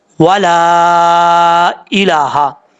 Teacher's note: लाम के आगे अलिफ है, उसके ऊपर मद है, अढ़ाई अलिफ या 3 अलिफ के बराबर इसको आप लंबा कर सकते हैं